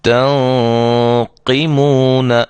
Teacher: نون ساکن کے بعد حروف مستعلیہ میں سے، یعنی موٹے حروف میں سے قاف آ گئی ہے، لہذا یہاں ہم اس غنے کو بھی موٹا کریں گے